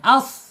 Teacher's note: Kemudian sifatnya di al-hams mengalir ya, mengalir as. Kemudian ada di al-isti'la terangkat ya, terangkat lidahnya as gitu ya.